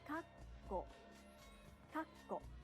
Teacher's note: To achieve the necessary pause in Japanese, the speaker pauses for one clap in between the syllables